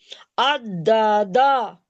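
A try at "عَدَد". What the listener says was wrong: अद्दा क्यों होगा, दाल पहली मर्तबा बीच वाला साकिन होगा, फिर दूसरी मर्तबा दाल दूसरे दाल को साकिन करेगा। अदद, बिल्कुल।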